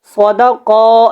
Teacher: قاف کے اوپر کھڑی زبر ہے تو اس کو آپ نے جو ہے وہ کھڑا کر کے ادا کریں اور قاف کو موٹا بھی پڑھیں